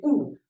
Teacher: जैसे कुछ है तो मुंह के आधार पर, यानी जो मुखाकृत यानी जो मुंह का आकार बनता है, जैसे आप बोलोगे ऊ, तो ऊ बोलोगे तो सोच के देखो, जो ओष्ठ है ओष्ठ वृत्ताकार बन जाता है